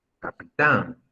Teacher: No, de hecho la sílaba más fuerte es tan.